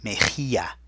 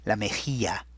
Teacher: Mejilla has that rough H sound, so there's that J, M-E-J, and then the double L sound that sounds like a Y, mejilla.